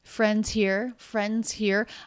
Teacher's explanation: she is ending with her pitch going up a little bit.